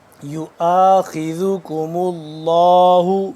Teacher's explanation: لفظ اللہ پور پڑھا جائے گا کیونکہ اس سے پہلے پیش ہے